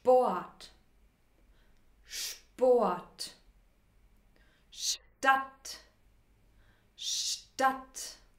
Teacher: Bei SP und ST kombinieren wir Sch plus P, also Schp. Oder Sch plus T, Scht. Schp, Schp, Scht, Scht.